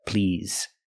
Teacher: to please the word is not pronounced please it's pronounced please using the ZZ sound with vibration like in the word zebra